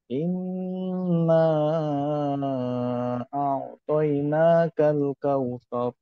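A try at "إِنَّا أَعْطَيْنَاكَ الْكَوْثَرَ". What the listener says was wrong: সাইবুল ভাইয়ের তেলাওয়াত এর উচ্চারণ মাশাআল্লাহ অনেক সুন্দর, কণ্ঠ মাশাআল্লাহ অনেক সুন্দর।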